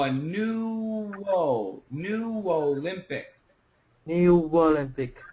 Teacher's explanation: and this is a consonant so this is an easy one we just take the W and connect it right into the O